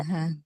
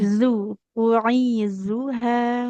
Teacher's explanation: Huruf zalnya hati-hati ya, jangan seperti da.